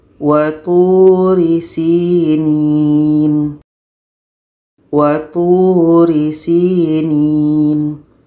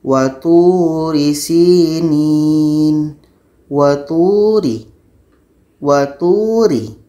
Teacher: Tapi kalau ro yang dibaca dengan tarqiq ini atau tipis ini, mulut kita tidak akan terasa penuh. Jadi kalau kita baca waturi sinin, waturi, waturi, tipis, mulut kita tidak terasa penuh.